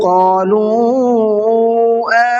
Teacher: قَالُوا کے واو کو تھوڑا سا کھینچ کر کے پڑھنا ہے کیونکہ اس پر چھوٹا مد ہے